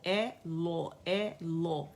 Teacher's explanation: تو لفظ الجلالہ جو ہے کیونکہ اس سے پہلے ہمارے پاس فتح آ رہی ہے تو اسے موٹا ہی پڑھا جائے گا، دونوں لام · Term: دونوں لام موٹے ہیں